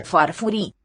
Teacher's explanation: it's a long vowel, so it's no devoicing happening.